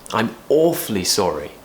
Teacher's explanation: falling tone at the end to show that we've finished · we want to stress the the word that makes it bigger, and that's awfully, right? So we need to give more power to that word to show how really sorry we are.